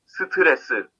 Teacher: In the word 스트레스, all four syllables are spoken with the same strength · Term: No stress in Korean